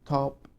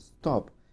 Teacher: ta in top is aspirated, while ta in stop is not aspirated. تلاحظ إنه الأسبريشن هو how much I puff in air, قديش بكون نفخ للهواء من أجل خروج الصوت.